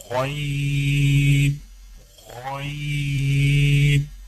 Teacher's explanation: غین کی ادائیگی میں زبان کی جڑ کو تالو کی طرف بلند کرتے ہوئے موٹی آواز میں پڑھیں